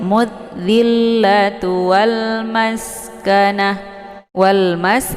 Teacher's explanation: Mudhillatu wal maskanah, wal mas ada alif lam, namanya alif lam al-qamariyah, karena sesudah alif lam terdapat huruf qamariyah yaitu mim. Nah, cara bacanya alif lamnya dibunyikan secara jelas, bunyi sukunnya ya.